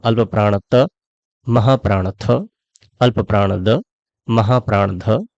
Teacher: मुंह का अगला जो भाग है, वह है दांत। दांतों से स्पर्श होकर के जो ध्वनियां निकलती हैं, उन्हें दंतव्य कहते हैं